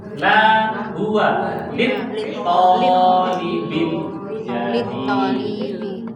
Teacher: Yang panjang tonya, linya pendek.